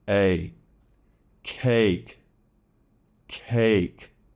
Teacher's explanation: The long sound in English, A, is not so open. It starts with your mouth open, but also wider. And it tends to slide into that Y sound.